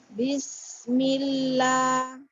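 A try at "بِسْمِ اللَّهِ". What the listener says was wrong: Turunkan lagi ya. Lidahnya lebih dekat ke bawah, di atas gigi seri bawah. Ya, atau diamnya di permukaan gigi seri bawah dan atas. Gigi seri. Ujung lidah kita. Sinnya maksudnya.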